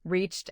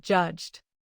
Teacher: Reached ends with CH, a voiceless sound, so use T. Judged ends with a voiced J sound, so use D. The spelling is complicated in both words, yet the throat test gives a clean answer.